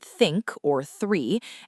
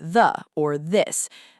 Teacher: We have the voiceless th, as in the word think or three, and we have the voiced th, as in the word the or this.